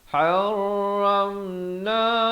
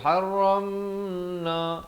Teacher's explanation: Jangan pula ram tu dipanjangkan jadi haramna, itu tak betul. Jangan panjang pada mim yang ada tanda mati asli. Di sini hukumnya izhar syafawi.